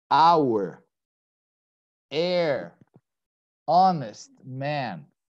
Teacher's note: in spite of starting with the letter H, the H is silent, it's not pronounced